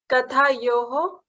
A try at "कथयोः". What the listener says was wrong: Kathayoho. Kathayoho. Now, you have to drop the A. So, instead of A, you have to say Tha.